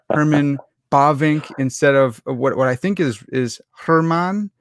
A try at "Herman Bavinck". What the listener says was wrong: Herman. You have to roll the R a little bit. Herman Bavinck. Bavinck.